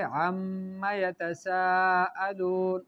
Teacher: اس کے بعد ہے عما یتساءلون، ٹھیک ہے، عن تھا نا، تو وہ نون جو ہے وہ میم میں مدغم ہو گیا، نون ساکن میم میں مدغم ہو گیا